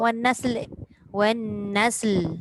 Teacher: Lam tu hujung lidah tu kan dekat langit. Jangan turunkan. Nanti dia jadi le.